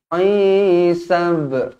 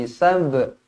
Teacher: Qalqalah sughra dibaca melantun.